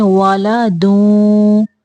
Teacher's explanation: यहाँ पे तनवीन की आवाज निकालते हुए वो के साथ मिलाएंगे